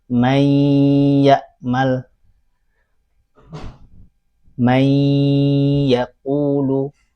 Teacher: ketika dia idgham, bunyi nun sukun atau tanwinnya hilang.